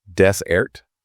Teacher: stress on the first syllable that's the dry sandy place like the Sahara